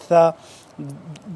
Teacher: زبان کی نوک کو دونوں دانتوں کے درمیان میں سے باہر نکال کے نرمی سے پڑھیں گے